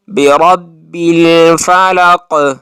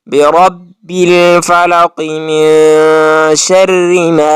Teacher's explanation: الفلق میں اب کاف پر آپ نے قلقلہ کرنا ہے جب آپ اس پر وقف کریں گے، لیکن جب آپ اس پر وقف نہیں کریں گے تو پھر آپ نے قلقلہ نہیں کرنا